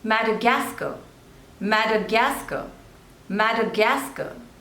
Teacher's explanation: you have to stress on the third one